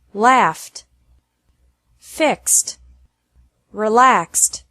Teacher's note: Finally, Ed is pronounced like T after verbs ending with an F or an X sound.